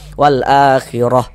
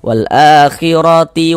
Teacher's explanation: Kaidah membacanya kalau kita berwakaf, kalau kita berhenti tepat di huruf tamarbutah, berhenti di huruf ta marbutah maka menjadi huruf H. Kalau tidak berhenti kita wasalkan saja maka menjadi huruf ta